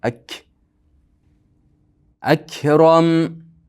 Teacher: Havo chiqsa ak, at. Bularda hams bor.